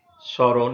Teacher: আদ্য ম ফলা অনুচ্চারিত থাকে এবং ম ফলা যুক্ত ব্যঞ্জনের স্বরধ্বনিটি সামান্য নাসিক্য প্রভাবিত হয়ে ওঠে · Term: ম ফলার উচ্চারণ